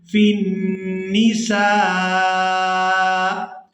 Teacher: اب یہاں پر ہم نے کرنا ہے وقف، تو وقف کی صورت میں حمزہ جو ہے یہ ساکن ہو جائے گا، سین کو الف مدہ اور مادی کی وجہ سے کھینچتے ہوئے حمزہ ساکن کے ساتھ ملائیں گے